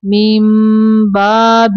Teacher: تدخلوا من باب یہ دیکھیں یہاں پہ اقلاب کا قاعدہ ہے نون کی آواز کو ہم نے میم میں بدل کے پڑھنا ہے